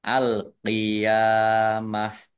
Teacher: Qaf kasroh ya sukun ya fathah berdiri mat tabi'i panjang 2 harokat. Kemudian tak marbutoh karena wakof dibaca hak sukun